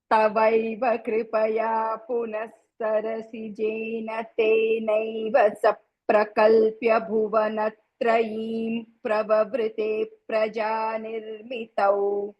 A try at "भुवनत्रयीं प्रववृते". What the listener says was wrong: బాగుంది.